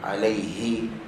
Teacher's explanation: makhraj ha adalah kerongkong bukan hidung